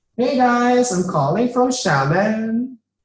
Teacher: you see that the tone Rises and Falls Rises and Falls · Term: valley girl accents, Valley Girl accent